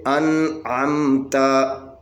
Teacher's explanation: الزبر ان، عین زبر میم عم، تا زبر تا، انعمتا، انعمتا، یہ یعنی نون ساکن کے بعد یہاں پہ عین ہے، عین حروف حلقی میں سے ہے، یہاں پہ بھی اظہار ہوگا، اور نون کے اوپر آواز کٹ جائے گی، یہ نون کے اوپر آواز کٹ کر آگے عین پڑھیں گے